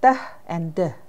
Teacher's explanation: the tongue touches the alveolar ridge just behind the upper teeth